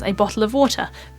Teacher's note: in RP English we would say this as a bottle of water because all of the t's are pronounced